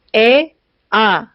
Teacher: 아래턱이 많이 내려가면서 혀도 많이 내려가서 혀의 높이가 낮습니다. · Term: 저모음